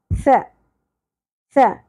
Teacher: ہلکا سا زبان کو باہر نکال لیجئے تاکہ سین کی اور شدت کی اواز کو کنٹرول کیا جا سکے